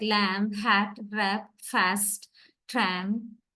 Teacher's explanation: Low front vowel, A. It is the sound in these words like lamb, hat, wrap, fast, tram